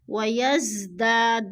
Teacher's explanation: دا پہ الف مدہ ہے، الف مدہ کو بھی ہم نے ایک الف دو حرکات کے برابر کھینچ کر پڑھنا ہے